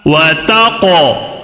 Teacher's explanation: وَتَقْوَ قاف کے اوپر جزم ہے تو کیا ہوگا؟ قلقلہ ہوگا